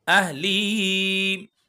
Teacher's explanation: اہلی کھڑی زیر ہے، اس کو بھی ہم کھینچیں گے